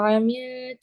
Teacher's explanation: ऐसा ना हो कि आपका हमजा वाज़े ही ना हो. जैसे मैं पढ़ा आमीन, तो हमजा वाज़े नहीं हो रहा